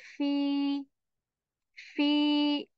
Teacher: w here sound for two counts again because of f letter tip of the upper teeth it touches the lower lips and air is removed